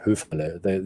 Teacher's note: So the R is actually audible. But up north, they would probably call it Höferle. You wouldn't hear the R.